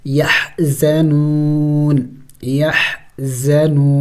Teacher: وقف میں نون کو سائلنٹ کر دیں گے